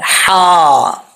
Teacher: angle के नीचे दो नुक्ते तो ये क्या है या हा अब हा को जो बरीक पढ़ना है इस हा का तालुक हलक की तरफ है